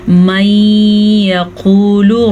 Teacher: वमिनहुम मन यक़ूलु, नून साकिन के बाद फिर से या आया हुआ है तो यहाँ पे इदगाम बिलगुन्ना होगा, दोनों पे गुन्ना करना है